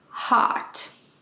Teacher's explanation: in american accent many words have an o spelling are pronounced as an ah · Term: long ah